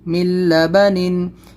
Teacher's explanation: میم لام زیر مل، لام زبر لا، مل، با زبر با، مل با، نون دو زیر نن، مل بنن. اس میں نون کو ہم لام سے بدل دیا ہے یہاں پہ، یہاں ادغام لام میں.